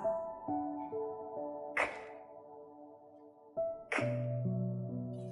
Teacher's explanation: Để phát âm đầu tiên k, trước tiên các bạn sẽ đẩy phần lưỡi phía sau chạm lên phần vòm mềm ở trong khoang miệng và các bạn sẽ bật mạnh hơi ra ngoài. Lưu ý âm này các bạn không để rung họng.